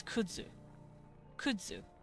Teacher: that ooh makes it a little harder to say and I say z instead. It's voiced. It's more voice sounding. · the z is technically a ts. It just comes out kind of z.